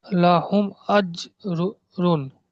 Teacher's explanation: জিমটা হলো হুরুফে কলকলার অক্ষর, তাই হুম, জিমকে কল কল করে হামজার সাথে মিলায়ে পড়তে হবে।